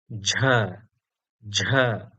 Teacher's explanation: Our next consonant is the voiced aspirated jha jha represented in IAST as j h a.